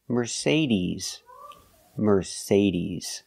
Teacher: the final sound is not s like Star it's Z like zebra